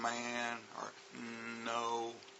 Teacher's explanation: and N which are nasal sounds like um man or no the sound actually kind of comes out of your nose those are called nasal sounds